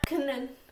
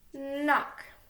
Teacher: So let's look at K-N. We only hear the N sound. It's not kn.